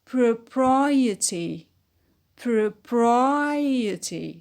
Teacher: When we add the suffix, it becomes propriety, propriety. So the stress on pri, the antepenult.